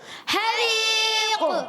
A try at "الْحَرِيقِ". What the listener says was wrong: آخر میں قلقلہ بھی کرنا ہے, قاف کو واضح بھی کرنا ہے.